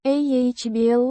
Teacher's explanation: Pronounced. ah-BLOHM-kahm. With the stress on the second syllable.